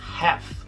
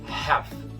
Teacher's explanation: A pronúncia correta dessa palavra em inglês americano é half, com um L mudo. Ignora que ele tá ali, tá?